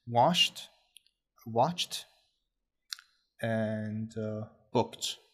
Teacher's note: there is Ed which is not pronounced like a normal Ed but rather a t sound